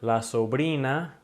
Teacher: if it's a single R in the middle of a word, then you're just going to produce the R sound in Spanish without rolling it continuously